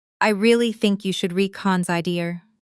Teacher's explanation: The stress naturally falls on really, think, and reconsider, the content words that carry meaning. While smaller words like you, should, are said more quickly and softly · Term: sentence stress